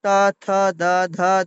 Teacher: এবং ত বর্গ উচ্চারণে ত, থ, দ, ধ দন্তানো জিহ্বার উপর পাটির দন্ত স্পর্শ করে